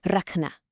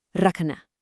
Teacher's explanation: Do you hear that slight, almost breathy ka sound right in the middle?